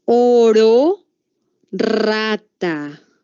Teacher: el aire hace vibrar la punta de la lengua al pasar. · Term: vibrantes